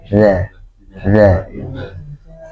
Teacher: Za kalau za itu tipis dan lidahnya lurus ya.